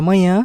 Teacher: Na palavra manhã, a letra A ela é nasalizada devido ao tio, diferente da palavra manha, que não tem essa nasalização